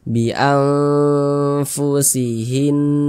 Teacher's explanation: Maka cara membacanya tuh disamarkan, kemudian juga didengungkan atau digunahkan. Akan tetapi dia karena ausat, maka kadar samar dan kadar dengungnya pun dia juga seimbang begitu, di tengah-tengah. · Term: ikhfa hakiki awsat